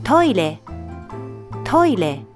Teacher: When pronouncing re, your tongue touches the roof of your mouth. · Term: Japanese R